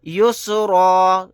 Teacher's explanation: آیت کرنے کی صورت میں را کے اوپر 2 زبر ہیں، لیکن ہم 2 زبر نہیں پڑھیں گے، ایک زبر کو پڑھیں گے الف کے ساتھ۔ یسرا یعنی ایک زبر کو ہٹا دیں گے آیت کرنے کی صورت میں۔